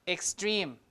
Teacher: this is after an S sound X is KS right so extreme so this is unaspirated